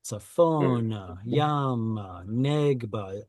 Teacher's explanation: Directional hay is generally not stressed. So that's why you see all the stress marks are penultimate.